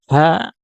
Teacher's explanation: Sedikit membuka pita suara sehingga kemudian ketika kita mengucapkan huruf ha maka udara mengalir ya tidak tertahan ya